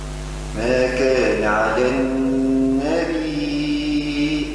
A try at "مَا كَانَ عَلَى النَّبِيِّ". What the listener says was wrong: لا ما تمدش، ما كان على النبي، النون مش النبي، مديتها شوية النون، لا غنها فقط، هاي عاود.